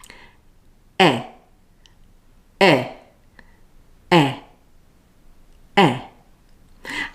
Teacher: Lips are spread, but only a little. My jaw is fairly closed and my tongue is forward. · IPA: /e/